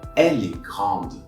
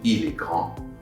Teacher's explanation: because I have a vowel right after the D, this time I pronounce the D.